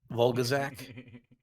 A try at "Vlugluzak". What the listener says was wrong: Vlug. It's Vlug, not Volg.